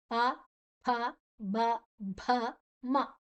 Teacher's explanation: ಇದು ತುಟಿಯನ್ನ ಮುಚ್ಚಿ ಹೇಳುವಂತಹ ಶಬ್ದಗಳು ಓಷ್ಟ್ಯ ಅಂತ ಹೇಳ್ತಾರೆ